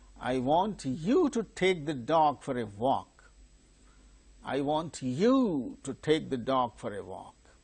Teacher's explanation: You is the tonic syllable. · The pitch falls from higher level to lower level. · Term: falling tone